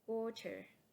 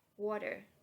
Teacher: When the sound comes after a stressed vowel and before a weak vowel. In American English, this sound is often made with a voice flap, similar to verified d.